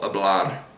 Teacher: you might hear a little bit of a roll, hablar, just a tiny bit.